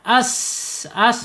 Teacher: B sama sin ya, sin secara makhraj ada di al-lisan, yaitu ujung lidah menyentuh gigi seri bawah ya. Kemudian secara sifat ada di al-hams, mengalir napasnya atau udaranya.